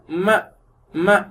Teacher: ம இந்த அமைப்புல இருக்கும். ம உதடு பாருங்க பிரஸ் ஆகுது. ம மூக்கு வழியா அதனுடைய சத்தம் வெளியேறும்.